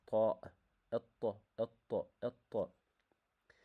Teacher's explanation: the tip of the tongue touches the gum area uh where the upper front teeth grow. This letter pronounced strong uh strongly and clearly from the front of the mouth.